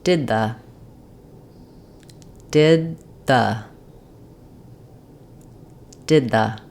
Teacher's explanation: phrases where we have a stopped D into a th